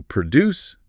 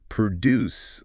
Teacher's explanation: Stress on the first syllable, but then produce the verb, like to produce a report. Stress shifts to the second syllable.